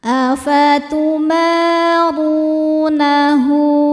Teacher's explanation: Karena ada wau sukun sebelumnya dammah maka dibacanya panjang dua harakat. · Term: mad thobi'i zohiri